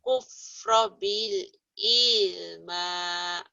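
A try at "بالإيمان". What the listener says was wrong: Jangan ilman. Bil iman.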